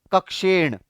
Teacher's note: री र श के कारण मूर्धन्य उच्चारण के कारण यहां पर ध्यान रखें दोस्तों, न की जगह ण उच्चारण हो जाएगा जिन शब्दों में री र श आएगा।